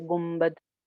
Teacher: नून के बाद बा आ जाए तो नून की आवाज मीम में बदल जाती है, और वहां पे भी एक अलिफ के बराबर गुन्ना हो जाता है।